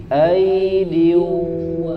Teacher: huruf Ain sudah bagus ya tidak masuk suaranya ke dalam hidung